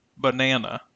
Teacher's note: notice how the middle part of the word sounds louder and longer to hear the middle naah is the stressed part of the